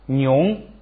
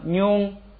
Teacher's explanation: 第一个呢是直接发本音妞，第二个一加上加字变成平声妞